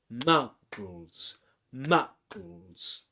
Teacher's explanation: The word Muggles has two syllables, Muggles, and the stressed syllable is ma.